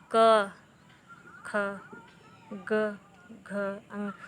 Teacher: तो क बोलने में प्राणवायु कम लग रही, वहीं हम बोलेंगे ख में अधिक लग रही, ग में कम, घ में अधिक प्राणवायु निकल रही है, अंगा में कम।